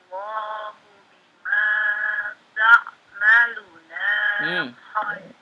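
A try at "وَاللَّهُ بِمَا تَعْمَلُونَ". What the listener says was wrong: Ta'maluna. Lu-nya yang panjang. Nah, sekarang na-nya langsung, nggak dipanjangkan. Wallahu bima ta'maluna khabir.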